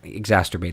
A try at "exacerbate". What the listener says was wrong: There's no T at the end or in the middle.